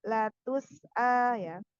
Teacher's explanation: sin sukun itu mempunyai sifat rokhwah